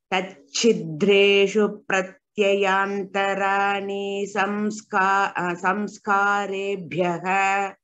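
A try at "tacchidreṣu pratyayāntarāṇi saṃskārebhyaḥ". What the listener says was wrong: Pratyayantarani. We don't make it a dirgha. And when we tell together, just a reminder for all of us, whenever we get dra, pra, tya, such conjunct letters, we stress on the first letter.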